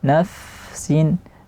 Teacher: fa-nya dia hamas, mengalir nafas secara sempurna